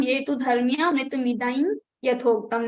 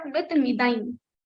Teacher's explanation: Now ya is the special letter. For if after anuswara there is ya in the next word, then the ya anusik will come. So it will become ye tu dharmya mritmidaim yathoktam, not mritmidam but mritmidaim.